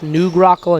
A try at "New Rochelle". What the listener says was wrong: Like New Rochelle, but with a G.